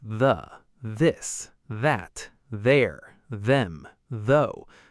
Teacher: The th in these words sounds almost like a d but with your tongue touching your upper teeth. >> Try it. Put the tip of your tongue between your teeth or just behind your upper teeth and make a sound. · The first TH sound is voiced, meaning your vocal cords vibrate when you make it. You can feel this by placing your fingers lightly on your throat.